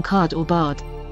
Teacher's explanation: Americans do not have this vowel instead pronouncing the same words using the a vowel with the lips unrounded and the tongue back but more relaxed